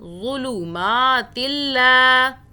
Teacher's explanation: ظلمات اللہ، لو ان کو نہیں کھینچ کے پڑھنا، میم کو کھینچیں گے، ایک الف کے برابر اوپر کھڑا زبر ہے